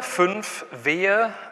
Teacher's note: Das sieht jetzt blöd aus, wenn ich das so mache, aber Sie nehmen Ihre obere Zahnreihe, legen die auf die Unterlippe, ziemlich eng und schicken dann Luft durch. Und dadurch, dass die Verengung relativ eng ist, gibt es dann so Turbulenzen und das fängt an zu rauschen. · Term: Frikative